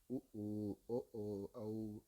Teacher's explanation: அப்போ வாய் திறக்கிறதோடு மட்டும் இல்லாமல் மேல்வாய் பல்லை அடிநாக்கினடியில் ஓரங்கள் தொடுவதால், அதாவது நாக்கினடியில் ஓரங்கள் தொடுவதால் இது பிறக்கிறது. அடுத்து உ ஊ, ஓ ஓ, ஔ இந்த வார்த்தைகள் உதடுகளை குவிப்பதால் இவை உண்டாகின்றன